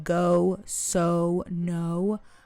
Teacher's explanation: some English vowels I may say similar to Farsy like go, so no. I speak them more rounded and lengthened.